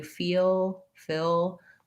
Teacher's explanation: with just the back of my tongue making that dark l